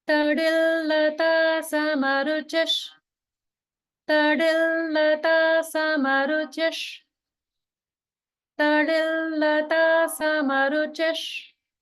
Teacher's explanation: this visarga is going to get pronounced like sha. because it's followed by sha in shut.